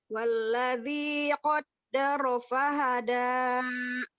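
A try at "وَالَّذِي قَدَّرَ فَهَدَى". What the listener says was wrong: Tapi ro-nya itu seperti, jangan wallazi qaddara. Nah, itu terlalu di ro kan. Ro-nya seperti ini. Rori rubar. Jadi agak tak sampai cadel, tapi agak-agak gitu. Qaddara.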